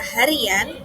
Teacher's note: kata berakhiran vokal I ditambah an, maka akan ada penambahan konsonan Y. Misalnya pada kata harian menjadi H plus ri plus yan.